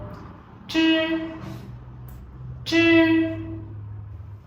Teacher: khi phát âm thì đầu lưỡi của chúng ta cong lên chạm vào ngạc trên và luồng hơi sẽ từ đầu lưỡi và ngạc cứng ma sát và bật ra ngoài. Âm này thì dây thanh không rung và không bật hơi, các bạn cùng đọc lại theo cô: “zh, zh”. · Âm đầu tiên đọc là “zh”, âm này khi phát âm thì đầu lưỡi của chúng ta cong lên chạm vào ngạc trên và luồng hơi sẽ từ đầu lưỡi và ngạc cứng ma sát và bật ra ngoài. Âm này thì dây thanh không rung và không bật hơi